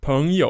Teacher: second tone followed by third tone